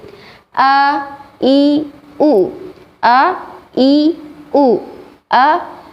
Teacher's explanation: ketika kita mengucapkan huruf hamzah berharakat fathah kasroh maupun dhomah maka tidak adanya udara yang keluar dari mulut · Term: tidak berhembus